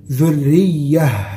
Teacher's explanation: التاء المربوطة دي نقف عليها بالهاء وها ساكنة